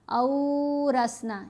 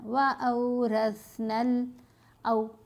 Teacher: جب لین حروف ساتھ آتا ہے تو آواز مڑ جاتی ہے، ٹیڑھی ہو جاتی ہے، زبر زیر پیش جیسی آواز نہیں رہتی۔ لین حروف کو نرمی سے پڑھیں گے اور ان کی آواز چھوٹی ہوتی ہے، ان کو لمبا نہیں کرنا۔ او رسنا یہ نہیں کرنا، وَأَوْرَثْنَا او، بس چھوٹی سی آواز ہے۔